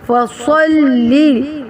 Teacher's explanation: فَصَلِّ صاد موٹا، لام باریک